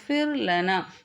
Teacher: சுகூன் பெற்ற ராவுக்கு முன் இருக்கக்கூடிய எழுத்துல கஸ்ரா அதாவது ஜேர் இருக்கும்போது இந்த ராவை லைட்டாதான் சொல்லணும்